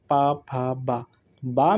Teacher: ओठ ओठ में जाकर स्पर्श करता है